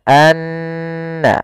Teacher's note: Maka cara membacanya tahan dulu n-nya, anna, baru dilepas. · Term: gunnah